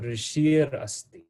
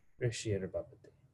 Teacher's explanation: So I'm going to replace that Visarga with Ra. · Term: rakara